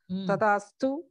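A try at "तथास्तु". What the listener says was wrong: திருப்பியும் அந்த தகாரம் நீங்க தாதா சொல்லக்கூடாது, இட் இஸ் தா,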